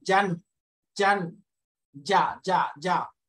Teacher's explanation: একটা আটকা আওয়াজ, অনেকটা বাংলাতে বর্গীয় জয়ের মতো